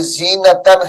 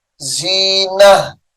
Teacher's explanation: یہ زینتن ہے، وقف کی حالت میں اس کو زینہ پڑھیں گے